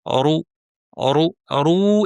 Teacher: ভারী করে র পেশ রু টান ছাড়া বলা প্র্যাকটিস করুন।